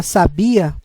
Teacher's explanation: a palavra sabia, a sílaba tônica é no bi, que não tem acento. E ele dá aquele som mais aberto. · enquanto a palavra sabia a sílaba tônica é no bi